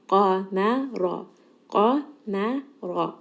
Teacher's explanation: Qaf is going to be heavy, mim here is light, ra in this case is going to be heavy. So make sure you switch heavy, light, heavy.